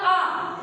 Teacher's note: हम कुछ बोलते हैं जैसे कि हमने बोला आ, तो हमारी जीभ पीछे के मतलब गले साइड की तरफ होती है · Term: पश्च